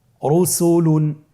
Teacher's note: র উপরে পেশে তাহলে র হরফটিকে মোটা করে পড়তে হবে আমার সাথে বলুন রসুলুন র হরফের দ্বিতীয় অবস্থা র সাকিনের ডানে জবর অথবা পেশ থাকলে তাহলে র হরফটিকে মোটা করে পড়তে হয়।